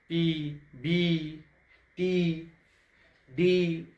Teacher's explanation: इनका उच्चारण करते समय गले से निकलने वाली हवा को जीभ या दांत या ओठों द्वारा अवरोध किया जाता है। जैसे बोलेंगे पी, तो क्या ओठ सट रहा है, क्या बोल रहा है, पी। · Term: कंसोनेंट